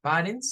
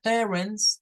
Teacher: Recordemos que padres no se dice parents, se dice parents con el schwa.